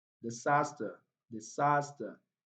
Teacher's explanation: the first syllable here contains a weak vowel sound, so it's not stressed. Then the last syllable contains a schwa sound.